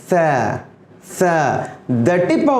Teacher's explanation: زبان کی نوک تھوڑا سا دانتوں کے باہر نکلی ہوتی ہے